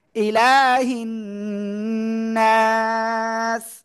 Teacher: আলিফ মাদের পরে আমরা ওয়াকফ করলে তিন আলিফ টান হবে।